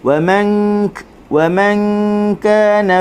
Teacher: Okey, wa man kana sama, nun mati dengung di sisi huruf kaf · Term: ikhfa